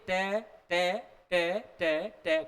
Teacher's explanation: ट बोलेंगे तो जीव दांतों के टच नहीं करेगी